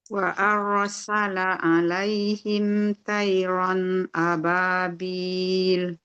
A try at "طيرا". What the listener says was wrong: Tonya tebalin. Tonya tebalin. Toyiron. Toyiron.